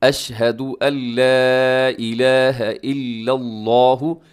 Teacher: لفظ اللہ کو آپ نے موٹا پڑھنا ہے